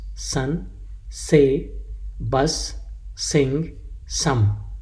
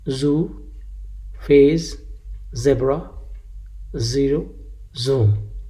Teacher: S is voiceless sound and Z is voiced, as in these examples: sun, say, bus, sing, some.